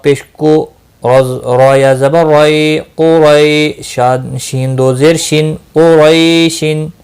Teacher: قاف مستعلیہ ہے پور پڑ جائے گا